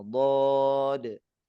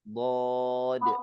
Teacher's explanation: yang kita tekan itu bukan ujung lidah, tapi yang kita tekan itu adalah sisi lidah, ya, sisi lidah kanan, kiri, atau dua-duanya menyentuh dengan atau bertemu dengan gigi geraham bagian atas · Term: huruf dhad